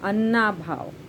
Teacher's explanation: यहाँ अ और अ स्वर मिलकर आ हो जाएगा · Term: स्वर संधि